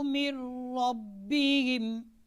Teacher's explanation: قاعدہ آپ نے یاد رکھنا ہے کہ نون ساکن اور نون تنوین کے بعد اگر لام یا را آ جائے تو نون ساکن اور نون تنوین کو لام اور را کے ساتھ ملائیں گے، یعنی غنہ نہیں ہوگا